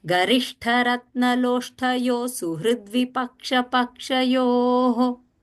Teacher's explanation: That Visarga is going to become half sa.